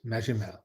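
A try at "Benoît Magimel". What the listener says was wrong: Benoit Magimel. A soft G.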